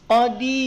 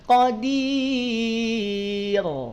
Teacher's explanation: Nih, ini ujung lidah yang ada titiknya tuh, yang warna putih. Ujung lidah nempel dengan langit-langit. Kemudian hamparkan pangkal lidahnya. Ketika dihamparkan, maka tidak akan terdengar menjadi tebal. Dia akan terdengar menjadi tipis.